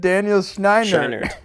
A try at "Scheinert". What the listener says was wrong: Scheinert. It's Scheinert. It's Scheinert. You're adding two N's for some reason. No. You're saying Daniel Scheinert, or you're saying like Daniel Scheinert. It's Daniel Scheinert. And Daniel Scheinert.